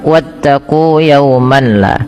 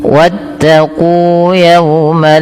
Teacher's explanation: idgham yang sempurna yang di mana nun dan tanwinnya hilang secara utuh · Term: idgham kamil